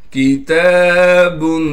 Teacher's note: تا پر کڑا زبر ہونے کی وجہ سے تا کو ایک الف کی مقدار کھینچیں گے، با میں اخفا یعنی غنہ کیا جائے گا۔